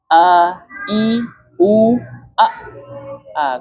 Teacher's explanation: Ketika kita sukun A, suaranya mengalir atau ketahan? Ketahan. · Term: Hamzah